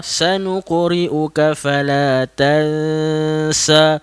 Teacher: Nun mati bertemu dengan huruf sin, didengungkan itu